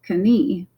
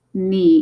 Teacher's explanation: They would read this as Knie, but this is just knee in English. Remember, we've dropped the K sound, but we keep the spelling.